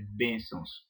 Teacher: Então a sílaba forte de bênçãos é bem e não sãos. Por isso que ela recebe o acento em bem, porque tem algumas pessoas que falam bençãos e a pronúncia correta é bênçãos.